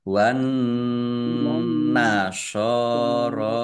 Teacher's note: Nun tasdid dibaca gunah atau mendengung, ditahan biar tampak dengungannya.